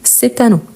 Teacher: je dis c'est un donc je prononce le T